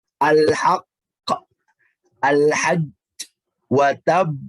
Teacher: Ini dibacanya dengan qalqalah tebal. Jadi pantulan yang tebal.